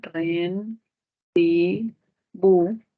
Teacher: rendibu en la u si hacemos separación silábica sería Ren bu sílaba tónica bu y se constituye una palabra aguda